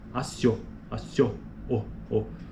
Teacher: por isso que é um ditongo crescente porque o pico da sílaba ocorre neste o então um ditongo crescente nesse sentido que ele começa a partir